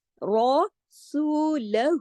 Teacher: ورسو، تمام آگے باریک ہے، را کے علاوہ تمام باریک حروف ہیں۔ رسولہ، الٹا پیش جو ہے یہ واو مدہ کی قائم مقام ہے، 2 حرکات کھینچ کے پڑھا جاتا ہے